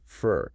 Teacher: In a sentence, it often just becomes fur. The O sound kind of disappears. · It's the ultimate lazy vowel sound, just a neutral, unstressed grunt, almost. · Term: schwa